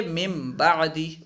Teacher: ساکن اور تنوین کے بعد با آ جائے تو اقلاب ہوگا، یعنی نون ساکن کو میم سے بدل کر پڑھیں گے